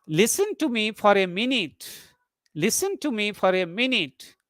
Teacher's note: before minute there is a rising tone